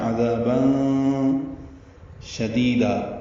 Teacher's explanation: تنوین کے بعد شین آنے کی وجہ سے اخفا ہے